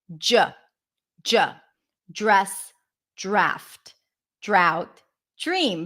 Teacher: It's like a J sound. The J is a voiced pair. It's the voiced pair of the Ch sound.